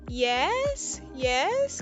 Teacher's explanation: if I say it with a falling Rising tone then this could be about a partial agreement